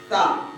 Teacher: زبان کی نوک ثنایا اولیاء کا کنارہ